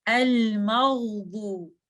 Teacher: आपने गहीन की आवाज को रन करना है जब तक आप दौद पे नहीं पहुंच जाते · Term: रखावा